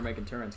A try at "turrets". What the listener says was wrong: There's no in before the T at the end.